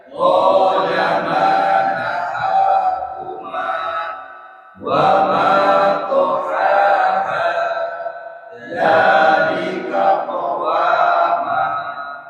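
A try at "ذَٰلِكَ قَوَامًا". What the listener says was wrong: Ya, sekarang belum di mad ya. Bacanya masih patah tangan. Dzalika qawaman.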